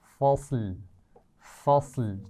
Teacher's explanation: فصل فصل، ٹھیک ہے، لام فصل، لام موٹا نہیں ہونا چاہیے آخر میں